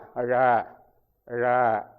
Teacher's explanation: இடையில நாக்கு வளையும் நுனிக்கும் போகாது தொண்டை விரலையும் போகாது இடையில நின்று தொடாம ழ ழ அப்படி